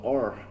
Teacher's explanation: O R sozinho aqui na pronúncia a gente fala igual a gente fala or. É o R retroflexo, que é o R com a língua lá atrás.